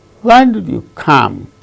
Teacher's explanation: when come these two are stressed the other words are not stressed in the sentence